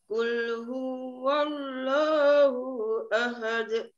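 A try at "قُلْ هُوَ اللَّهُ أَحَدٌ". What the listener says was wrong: Hati-hati hu-nya tidak kepanjangan, Bu.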